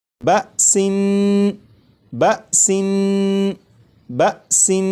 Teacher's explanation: نون کو پڑھتے ہوئے زبان تالو سے لگا کر پڑھوں گا